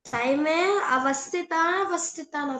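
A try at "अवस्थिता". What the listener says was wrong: అది అవస్థిత, కాకపోతే మనం అని ప్రొనౌన్స్ చేయకూడదు అక్కడ.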